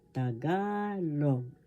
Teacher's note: The accent is in the second syllable.